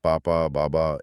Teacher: ब बोलने के लिए बस दोनों होठों को आपस में टकराना है